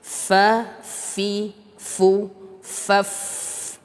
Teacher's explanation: fa dalam keadaan apapun itu dia tetap keluar hamsnya.